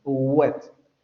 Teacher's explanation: Es como una U, pero la lengua se echa todavía más atrás. Wet. Prácticamente como una G.